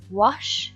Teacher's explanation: W is a bilabial sound, so it is a bilabial glide.